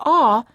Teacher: a and a are very similar sounds except for the awe the lips are a little bit more oval in shape and the tongue is slightly tense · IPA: /ɔ/